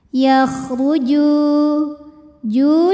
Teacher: karena ada wau sukun didahului baris damah maka Jim panjang dua harakat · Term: Mad Thobi'i